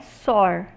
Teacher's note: Soar é uma variante da palavra sol, em que o L pós-vocálico é realizado como R.